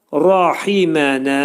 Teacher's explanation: Rahimənə ra qalın oxunacaq burda.